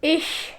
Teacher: It's when we from this position we move a little bit up the middle of the tongue to the middle of the palate, so it will be. Some people in Germany pronounce it a little bit different with some kind of a sh effect